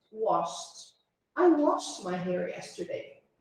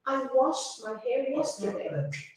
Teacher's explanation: A gente não precisa forçar muito a pronúncia desse T no final. Ele é sutil, mas ele é o somzinho do T.